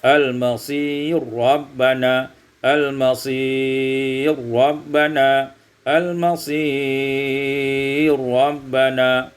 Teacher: idgham ra fi ra, diidghamkan ra pada ra menjadi al-masir rabbana